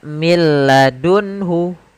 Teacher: Tidak dibaca min ladunhu, tapi langsung ke huruf lam. Karena nunnya dianggap tidak ada dan diidghamkan ke huruf lam. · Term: idgham bila gunnah